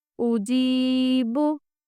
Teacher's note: देखिए आप, उजीबु, इसमें हम क्या खींच रहे हैं? सिर्फ जीम खींच रहे हैं, क्योंकि जीम के साथ या मद्दा है और हमज़ा पे भी हरकत है और बा पे भी सिर्फ हरकत है, इसलिए हमें इन दोनों को जल्दी पढ़ना है।